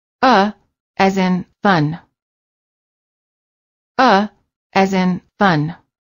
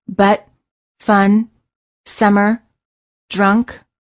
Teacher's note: for the uh sound the lips are completely relaxed and just slightly parted the tongue is also very relaxed and in the middle position